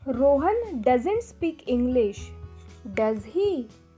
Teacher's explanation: When we are not sure or less sure of the answer and want to check, that time we use rising intonation. That time our voice goes up.